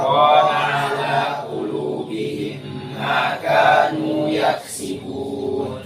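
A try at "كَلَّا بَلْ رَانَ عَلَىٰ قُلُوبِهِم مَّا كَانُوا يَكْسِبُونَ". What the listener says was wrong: Aina kaf hams yaksibuna. Nah lagi Yaksibun.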